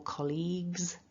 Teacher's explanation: So that's the key thing, is don't allow the G and the U to throw you off. And we need to get that voiced Z for the plural S